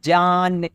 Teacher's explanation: اس میں نون کی آواز مکمل آتی ہے، نون جو ہے پوری طرح سے ظاہر ہوتا ہے، یہ نون ظاہر ہے۔